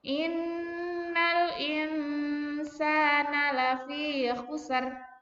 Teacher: Ketika mengucapkan huruf kha itu adalah kotor. Ada dahak seperti di tenggorokan ya.